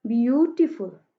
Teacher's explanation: यू पे हम लोगों ने स्ट्रेस किया है